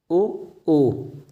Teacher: तो ये जो है कंठोष्ठ हैं। ओ कंठ और ओठ के मिलने से उच्चारण होता है